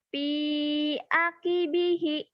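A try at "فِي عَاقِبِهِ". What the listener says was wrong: Panjang ujungnya. Ujungnya panjang.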